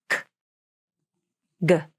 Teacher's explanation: the back of the tongue makes contact with the soft palate. This stops the airflow. A small amount of air pressure builds up in the back of the mouth and throat. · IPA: /k/ and G /g/, /k/